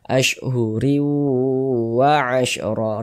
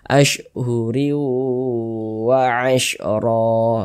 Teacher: Maka cara membacanya dengan cara memasukkan, kemudian disertai dengan gunnah atau dengungan. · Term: idgham bi gunnah